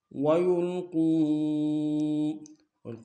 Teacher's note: فَإِن لَّمْ يَعْتَزِلُوكُمْ وَيُلْقُوا میں قاف کو واو کے سامنے آئیں گے، واو مدہ اور مد منفصل کم سے کم دو انداز میں کھینچیں گے